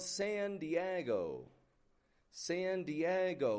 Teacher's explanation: We have a modified wide A on that San. I'm not giving it just a San Diego, but San.